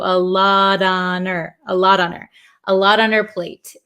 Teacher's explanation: The H in her kind of disappears also. So a lot on her, a lot on her, a lot on her plate, okay?